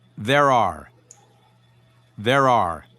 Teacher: notice how the r sounds blend together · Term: link